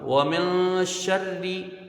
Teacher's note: شین کو را سے ملائیں گے. را مشدد ہے اور را کے نیچے زیر ہے. را یہاں پر باریک پڑھی جائے گی، دونوں را باریک ہوں گی. · شین آیا ہے تو یہ حروف اخفا ہے. ایک الف کی مقدار یہاں غنہ کیا جائے گا، اخفا کریں گے. شین کو را سے ملائیں گے.